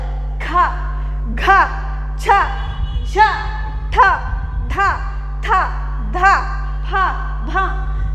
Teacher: column ಅಲ್ಲಿ ಸೋ ಈ second row ಮತ್ತೆ ನಾಲ್ಕನೇ ರೋ ಅಲ್ಲಿ ಬರೋದನ್ನ ನಾವು ಮಹಾಪ್ರಾಣ ಅಂತ ಕರೀತೀವಿ ಜಾಸ್ತಿ ಉಸಿರಿಂದ ಉಚ್ಚಾರ ಮಾಡಬೇಕು